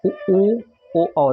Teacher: जिन स्वरों के उच्चारण में ओंठ वृत्ताकार हो, घूमे। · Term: वृत्तमुखी स्वर